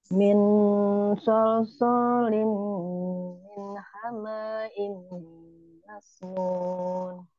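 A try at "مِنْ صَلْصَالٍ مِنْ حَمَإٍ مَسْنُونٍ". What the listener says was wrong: Masih terdengar panjang. Min hamain masnun. Maknya pendek.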